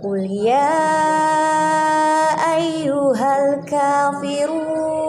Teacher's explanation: Karena di situ ada mat tabi'i bertemu dengan alif dalam satu kalimat. Jadi bacaannya harus panjang 5 harokat.